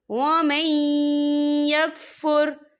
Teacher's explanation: بغیم بینہم وَمَن یکفر، یہ دیکھیں وَمَن، یہاں نون ساکن ہے، نون ساکن کے بعد جو ہے یا آ رہا ہے، اور یا جو ہے رفع یرملون میں سے ہے، تو یہاں پر ادغام ہوگا، تھوڑا سا غنّے کے ساتھ پڑھیں گے